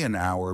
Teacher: because the h is silent. It sounds like a vowel